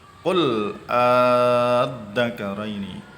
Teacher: Mad farqi ini panjangnya sampai 3 alif atau 6 harokat atau ketukan.